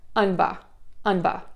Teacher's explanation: put your lips together for the ba, and then just open your mouth to add that really short vowel again. Unba, unba.